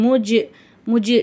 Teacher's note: இந்த இடத்துல சுக்குன் பெற்ற ஜீம் வருது, ஜீம் வந்து கல்கலாவுடைய எழுத்து, அதனால அசைச்சி ஓதணும்.